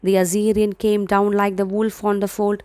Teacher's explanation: Why it is anapostic? Because it follows the pattern of 2 unstressed syllable followed by a stressed syllable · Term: anapostic tetrameter